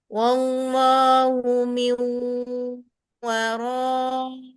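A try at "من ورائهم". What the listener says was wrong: Tambah satu harokat lagi ro.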